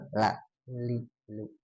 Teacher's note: Bahkan lam ini kalau dari segi suara dia mah tengah-tengah antara syidah dan rakhawah ya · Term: tawasut pertengahan